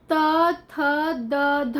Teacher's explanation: आपको ऐसा लग रहा होगा कि हमारी जीभ जो है वो हमारे दांतों को टच कर रही है, तो ये इसका उच्चारण स्थान क्या हुआ, दंत हुआ।